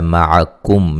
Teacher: معکم میم ساکن کا اظہار ہے، غنہ نہیں کیا جائے گا۔